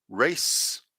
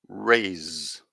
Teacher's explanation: in the first one you can just feel the air coming through your mouth and the second one you can feel the vibration in your throat and that's the difference between s and z race rays okay